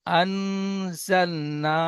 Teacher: নুন সাকিনের আওয়াজকে নাকে তুলে এক আলিফ পরিমাণ গুন্না করে পড়তে হবে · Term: ইকফা